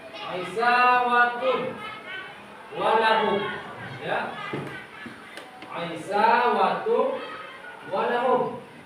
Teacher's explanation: cara membacanya yaitu dengan dengung selama 2 harokat atau 1 alif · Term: idgham bi gunnah